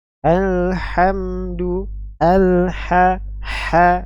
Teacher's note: ini diucapkan dengan ha yang keluar dari wasul halqi pengorokan bagian tengah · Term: wastul halki